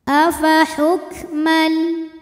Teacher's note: qamariah sebab alif lam menghadapi huruf qamariah yaitu huruf Jim maka lam sukun dibunyikan dengan izhar atau jelas oleh karena itu lam sukun ini biasa disebut dengan izhar qari